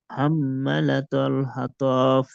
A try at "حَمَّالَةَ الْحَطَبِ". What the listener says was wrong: حمالة الحطب. হ্যাঁ, মা টান দেন, হাম্মা মিম আলিফ জবর মা, এক আলিফ টান হবে।